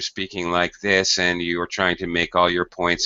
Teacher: speaking with no intonation at all. That is, no high and low pitch. But if you're speaking like this and you are trying to make all your points and get your content in there, you're going to sound like a robot and you're not going to get a very good score.